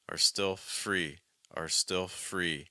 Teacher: So I would stress free there.